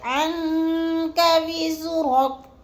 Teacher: عن پہ جو ہے ہم نے اکفا کرنا ہے، آواز کو ناک میں چھپا کر پڑھنا ہے۔ جیسے عنك وزرك، اور را کو پر کر کے پڑھنا ہے۔